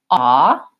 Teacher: this ah vowel I call it the caught law vowel is a rounded vowel my lips are round and my tongue is further back